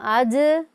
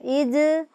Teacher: جیم کی ادائیگی کرتے وقت بھی آپ محسوس کریں گے کہ آواز میں جنبش پیدا ہوتی ہے اور آواز اپنے مخرج سے لگ کے ٹکرا کر واپس لوٹتی ہے۔ یہ حروف قلقلہ کی پہچان ہے۔